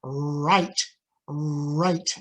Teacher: right and if you can see my uh mouth tighten up that's the lip rounding on r at the beginning of a word making it more intelligible